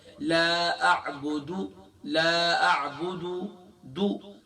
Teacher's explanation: ایک اور غلطی جو ہم کرتے ہیں وہ کیا کرتے ہیں؟ دال کو ہم کھینچ دیتے ہیں